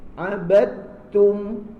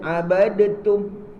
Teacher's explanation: Jadi tak boleh abadatum. Jangan ada dal tu jadikan qalqalah. Ambil sifat ta. Kan ada dia tasdid lagi pula tu. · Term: idgham mutaqaribain